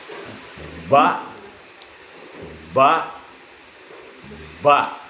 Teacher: Ini namanya huruf ba. Ba itu makhrajnya atau keluarnya antara bibir dua atau dua bibir. Jadi ketika kita mengeluarkan huruf ba, ancang-ancangnya setanya kedua bibir mingkem. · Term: huruf bibir